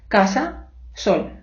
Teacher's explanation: іспанська есе це щось між нашими с та ш